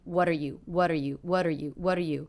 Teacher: very fast quite flat lower in volume